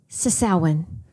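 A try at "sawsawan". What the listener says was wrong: Oh, sasaw. Oh, yes, sausawan. Wait, you said it so shallow, like sasawan.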